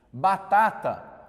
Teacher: a sílaba tônica não está na primeira ela está na segunda sílaba